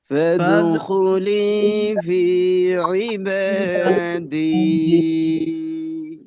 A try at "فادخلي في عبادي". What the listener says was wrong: আচ্ছা, এখানে একালিফের পরিমাণকে সম পরিমাণ রাখা, সোয়াব্বার ক্ষেত্রে কিন্তু শেষে দীর্ঘ হয়ে যাচ্ছে, যেটা পূর্বের পরিমাণের থেকে সামঞ্জস্যপূর্ণ না পূর্বের গুলার সাথে। তো একই রকম রাখা, যেমন ফাদখুলি ফি ইবাদি, চারটা একই রকম রাখার চেষ্টা করা।